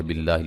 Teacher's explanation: لفظ اللہ کو باریک پڑھیں گے، اس سے پہلے زیر ہے